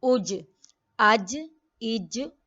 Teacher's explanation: جیم جو ہے واقعی وسط اللسان تالو سے جا کے لگتی ہے تو جیم ادا ہوتا ہے